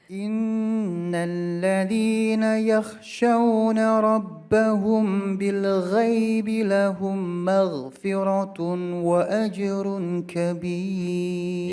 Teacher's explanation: Lahum itu berdengung, maghfiratun berdengung lagi, wa ajrun kah itu juga berdengung, tiga.